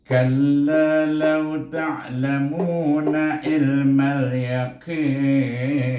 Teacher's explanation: sebelum nun ada huruf mat, maka kita baca dengan mat alif sukun, sama ada 2 atau 4 atau 6 harakah panjangnya. Kadar panjangnya bacaannya ialah kadar 2, 4 atau 6.